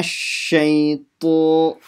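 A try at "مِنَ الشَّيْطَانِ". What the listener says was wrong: The to is not full mouth enough. Shaito.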